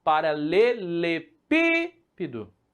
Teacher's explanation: É uma terceira, pessoal. É a antepenúltima. Se está na antepenúltima, ela vai estar se encaixando aqui nesses três elementos.